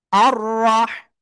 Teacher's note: রার উপরে জবর মোটা আওয়াজে পড়তে হবে